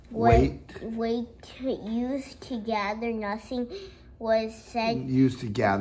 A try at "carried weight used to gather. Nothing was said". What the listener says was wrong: got to stop at the punctuation. This is called a comma, okay? Pause.